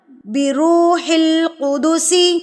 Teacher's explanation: سین کی سیٹی آنی چاہیے، سین کو مضبوط کیجئے. آپ سب کی سین بہت کمزور ہے، سین اور تشدید دونوں کو مضبوط کیجئے، اس کو کمزور نہیں پڑھنا.